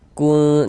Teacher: jadi bagian kunnya itu suaranya itu kita tahan ya, kita panjangkan sebentar. Kun, nah, kira-kira sepanjang 2 harokat. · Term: ikhfa hakiki aqrab